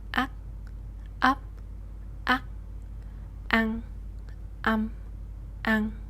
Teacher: the N is gonna be the NG ending sound and the T ending sound is gonna be the C ending sound. Therefore, these pairs are gonna sound exactly the same. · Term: Southern accent